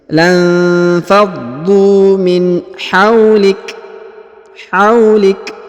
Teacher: Huruf kaf disukunkan atau dimatikan, kemudian diberikan hembusan tipis.